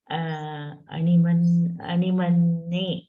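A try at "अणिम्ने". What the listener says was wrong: Animne, not Animanne. Animne.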